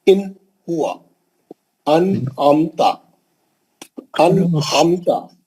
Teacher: ہم نون کی آواز کو جلدی پڑھیں گے، نہیں کھینچیں گے، غنہ نہیں کریں گے · نون کو کلین پڑھنا, نون کو کھینچنا نہیں, لمبا نہیں کرنا, غنہ نہیں کرنا, نون کو جلدی پڑھنا, کلین پڑھنا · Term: اظہار حلقی